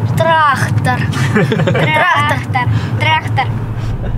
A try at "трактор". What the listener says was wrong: Запомните, трактор, К, буква К, трактор. А не трактор.